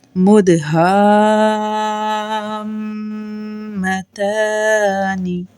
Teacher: حروف مدہ کے بعد میم مشدد آ گیا، مد لازم ہوگی یعنی 6 حرکت تک کھینچنا ہے ، 6 سیکنڈ تک اس کو اسٹریچ کرنا ہے، مدہامتانی، حمزہ،